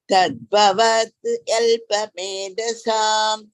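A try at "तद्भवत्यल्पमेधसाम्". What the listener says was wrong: Don't break. Tadbhavatyalpa bhavatya. Tadbhavatyalpamedhasam.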